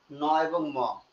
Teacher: করে ন এবং ম ঠিক আছে এজন্য এরা এরাও নাসিক্য বর্ণ নাকের মধ্যে যায় এদেরকে উচ্চারণ করতে গেলে তাই নাক থেকে উচ্চারিত হয়